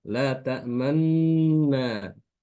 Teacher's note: Kalau yang ismam itu disertai dengan memoncongnya bibir ketika mengucapkan nunnya itu.